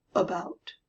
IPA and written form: əbæot (about)